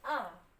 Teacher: जो एक मात्रा का समय जो लगा हुआ है उससे दुगना समय लगेगा